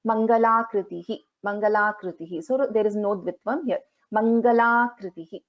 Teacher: the r is a swara. So here there is no Dvitvam for ka. So this has to be chanted very plainly.